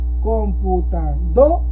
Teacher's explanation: En este caso la sílaba tónica es la do.